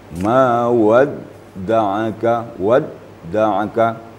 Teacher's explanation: Dal juga sifatnya syiddah tidak mengalir suara jadi apabila Dal ber tasdik maka eh suara tidak mengalir Ma